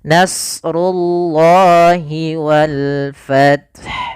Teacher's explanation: runya tebal Allahnya pun tebal di siniah lafal Allah tebal kemudian lafal Allahnya kita panjangkan dua harakat nasrullahi walfth Kemudian pada